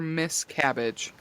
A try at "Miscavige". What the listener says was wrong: Miscavige with a V.